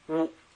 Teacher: 那个元音发乌，要发平声，变高调了